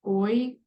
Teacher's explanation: that sound is one vowel transitioning into the next